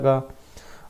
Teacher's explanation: तो गले से बोला जाता है गा